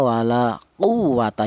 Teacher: yang quwwata itu ditekan, itu namanya nabr